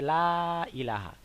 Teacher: পরের শব্দে হামজা আসার কারণে এই আলিফ মাতটাকে আমাদের তিন আলিফ দীর্ঘ করতে হবে